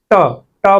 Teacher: हमारा जीभ का जो अग्र पार्श्व भाग है वो हमारे मूर्धन्य मूर्धा को टच कर रहा है